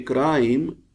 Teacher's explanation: but in crime after R the sound is I this is moving this is starting from a and goes to E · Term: moving sound